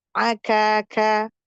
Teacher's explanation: kaf tipis hamas ya. Dia syiddah dan hamas.